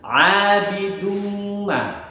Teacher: yaitu tanwin dhamma bertemu dengan mim. Oleh karena itu harus dibaca dengung. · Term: idgham bi gunnah